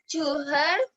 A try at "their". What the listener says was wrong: to their, not her, their, their, their